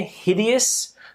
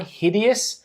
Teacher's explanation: hideous, stress on the I